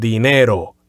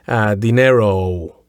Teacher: dinero just ends on an O, just a dry, short O sound.